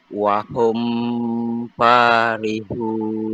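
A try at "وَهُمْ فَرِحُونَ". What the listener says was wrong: Awak bunyi dengung tadi tu. Ustaz Kabar tanpa dengung.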